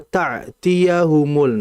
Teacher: Hamzah itu pengucapannya berada di bawah tenggorokan.